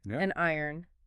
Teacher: by adding the N, saying an iron or an hour, that consonant acts as a bridge.